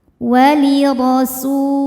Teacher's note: ro-nya dibaca secara tafkhim karena berharokat fathah. Cara bacanya ditebalkan. Walirasu, su matobi'i zahiri, sebab ada waw sukun didahului harokat dhammah.